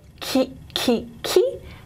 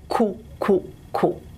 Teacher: you should feel your tongue is more forward for ki, ki, ki, and more back for ku, ku, ku